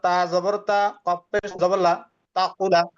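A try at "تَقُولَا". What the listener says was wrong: এটা তা না, সা হবে, সা।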